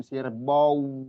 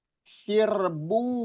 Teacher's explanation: Jangan sirbau gitu, tapi sirbu monyongnya sempurna langsung bu nahan di wau itu idgham bighunah.